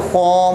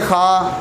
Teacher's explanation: और ये जो ख्वा है इसको मोटा हरफ करना है, ठीक है। ख्वा मुँह गोल करके पढ़ेंगे, अगर हम वैसे पढ़ें खा तो फिर वो गलत हो जाएगा क्योंकि ये मोटा हरफ है, इसको मोटा ही पढ़ेंगे, ठीक है।